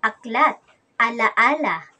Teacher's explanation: Ang posisyon ng ating dila sa ponemang A ay nasa mababa at ang bahagi naman ng ating dila ay nasa sentral. Kaya ito ay binibigkas na A, A, A.